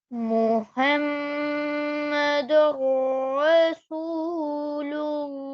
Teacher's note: Okay, so that's because of the Ra. You did not hear him say any kind of N sound because Idgham took place.